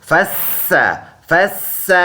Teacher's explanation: اس سین کو ایک کلی کی مقدار لمبا کریں گے اس کڑی زبر کی وجہ سے. سیٹی والا ورڈ ہے، تھوڑا سا سیٹی ساؤنڈ نکالیں گے.